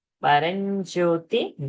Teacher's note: Paranjyoti, J is there, so Anuswara will become Nyakara.